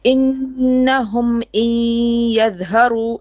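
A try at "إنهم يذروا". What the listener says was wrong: Yeah, you're correct, but you need to be a bit more with gunna.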